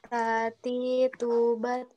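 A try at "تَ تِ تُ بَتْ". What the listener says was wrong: Sedikit lagi aliran udaranya. Nah, sekali lagi yang harus diperhatikan di huruf ta adalah di makhrajnya. Ya, harus sesuai. Ketika makhrajnya sesuai, dia pasti ada aliran udara yang keluar juga gitu kan, ikut-ikutan keluar seperti itu.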